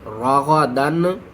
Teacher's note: وَكُلَا مِنْهَا، واو زبر وا، کاف پیش کو، وَكُو لام الف زبر لا، وَكُلَا میم نون زیر من، ہا الف زبر ہا، وَكُلَا مِنْهَا رَغَدًا حَيْثُ شِئْتُمَا، را زبر را، غین زبر غا، راغا دال 2 زبر دن، راغدن۔ تنوین کے بعد حروف حلقی میں سے حا ہے تو ہم یہاں پر اظہار کریں گے